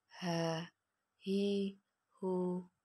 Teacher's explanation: dikeluarkan dari tenggorokan yang terjauh